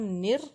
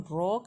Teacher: جب ہم نر کہیں گے تو را کو باریک رکھیں گے، لیکن جب ہم را کہیں گے تو ہم اس کو موٹا کریں گے